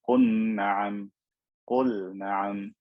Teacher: I don't merge the lam into the noon.